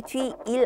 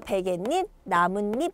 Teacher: 그렇기 때문에 뒤일 안 하고 뒷일 이렇게 니은 소리가 덧납니다